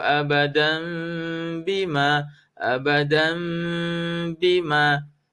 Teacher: Tanwin bertemu dengan huruf ba. Iqlab. Kena buat dengung.